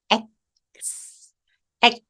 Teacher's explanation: 알파벳입니다 x 굉장히 간단하죠 가볍게에 벌려 주신 다음 엑 액 하고 k 사운드로 공기를 한번 막아 주세요